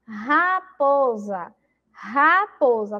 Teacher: o re tem aí o som forte, porque ele está lá no início da palavra